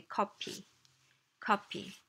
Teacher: it's just not a sound that exists in Korean so we say copy copy P is the closest approximation